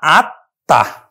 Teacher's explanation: এই আত্মা কিন্তু বাংলা উচ্চারণ, যখন বাংলা আমরা উচ্চারণ করব তখন কিন্তু আত্মা উচ্চারিত হবে, অর্থাৎ এখানে ম ফলাটা যুক্ত আছে ত এর সাথে, এই তটা কিন্তু দুইবার উচ্চারিত হবে। তার উচ্চারণ আমরা করব কিন্তু বাংলা সরেয়া তয় হস আত্মা, তটা দুইবার উচ্চারিত হবে এবং এই ম ফলার জন্য কিন্তু চন্দ্রবিন্দু হবে।